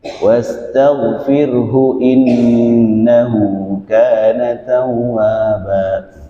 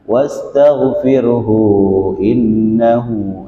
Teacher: Karena sebelum hu itu ada harokat sukun. Kalau ada harokat sukun maka hu atau hi, domir itu dia dibacanya satu ketukan.